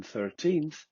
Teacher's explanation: Dental. Formed by contact between the tongue tip or blade and the upper front teeth.